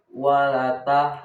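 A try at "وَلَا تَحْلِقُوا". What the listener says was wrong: Lanya panjangin ada alif.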